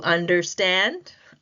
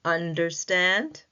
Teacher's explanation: The primary is stand in understand, but the secondary stress is placed on the first syllable under.